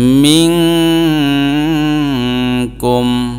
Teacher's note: এই নুন সাকিনের উচ্চারণটা নাকের ভিতরে নিয়ে গুন্না করে লুকাইয়া পড়ব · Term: ইখফা